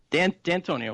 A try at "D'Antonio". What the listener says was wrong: And you're saying the and in there.